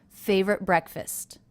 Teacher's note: in favorite was pronounced as a stop favorite favorite favorite breakfast so there was no release of the T sound · So there was no release T of the T sound.